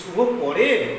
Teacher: এটা না বলে যদি বলি যে শুভ পরে, তাহলে দেখো শুভ পরে, যে শুভ শব্দটা বলছি এক্ষেত্রে সুরের একটা ওঠানামা আছে। এই বাক্যে প্রথমে সুরের প্রবাহটা ক্ষীণ, পরে যখন যাচ্ছি তখন তীব্র। শুভ পরে একটু জোর দিয়ে বলছি। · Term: প্রশ্নবোধক, সূক্ষ্ম সুরের প্রবাহ